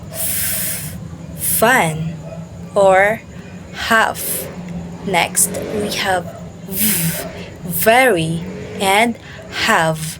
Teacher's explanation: the two articulators move closer so that the air flows through a small opening. This causes air turbulence which became audible. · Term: fricatives